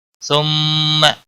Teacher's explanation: ثم میم مشدد پر غنہ ہوگا